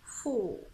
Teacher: you need to round your lips in order to pronounce it and make the O sound